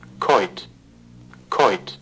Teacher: Okay, starting with a plosive voiceless consonant. Okay, which is aspirated.